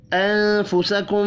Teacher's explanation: نون ساکن کے بعد فا ہے، اخفاء حقیقی ہوگا